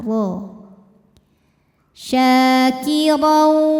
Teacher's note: Huruf ra dibunyikan secara tafkhim karena harokatnya tanwin fathah. Cara membacanya adalah ditebalkan dengan cara mengangkat pangkal lidah kita.